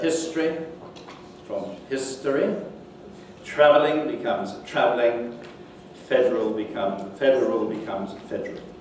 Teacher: Vowel elision is another feature. So the elision of schwa in unstressed syllables, and particularly where this comes before certain sonorant consonants, L, R, and N